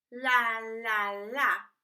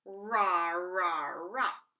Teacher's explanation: we're going to use the front L, la, la, la, versus the back R, ra, ra, ra. And this will force you to create two different places, la, ra, la, ra, la, ra.